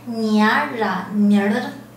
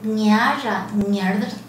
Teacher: 因为它是一个阴性后加字，所以它会拉长，声音拉长，声音变弱，二声维持不变